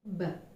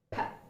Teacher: B is a voiced consonant, but P is a voiceless consonant